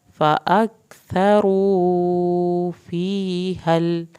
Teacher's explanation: सा को ज़बान के नोक से पढ़ना है, रॉ को पुर करके